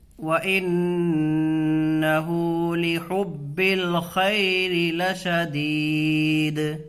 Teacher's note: نون میں غنہ ہوگا، نون کے اوپر تشدید ہے · را کے نیچے زیر ہے، اس کو باریک پڑھیں گے۔